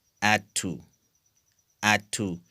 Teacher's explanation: So here in this example, d, okay, became voiceless.